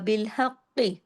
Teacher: حق کاف کو سختی سے جوڑنا بھی ہے، موٹا بھی کرنا ہے